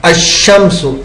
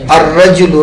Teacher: ال جب ایسے لفظ پر داخل ہو جس کا پہلا حرف شمسی ہے تو ال کا لام حرف شمسی میں مدغم ہو جاتا ہے، یعنی تلفظ کے وقت لام کے بجائے حرف شمسی ہی کا تلفظ ہوتا ہے